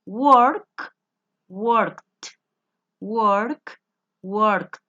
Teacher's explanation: cuando los verbos el sonido final es sordo como el caso de work yo tengo que pronunciar esa terminación Ed como una t de tetero